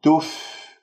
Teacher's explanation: أنت ضميت الشفاه في الفاء الساكنة وأنت سحبت ضمة التاء إلى الفاء الساكنة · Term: تخليص الحركات